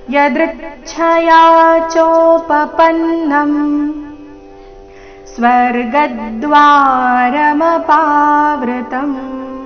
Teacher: ಯದೃಚ್ಛಯಾ ದೃ ಮೇಲೆ ಆಘಾತ